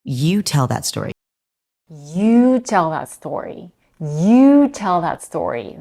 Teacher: The stress is on you. Do you hear how her pitch goes up in the word you as well?